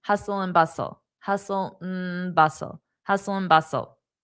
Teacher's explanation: And the and is pronounced as mmm